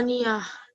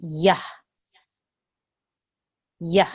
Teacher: Ta mabuta, you have to make it into a ha with a sukoon. So it's yah.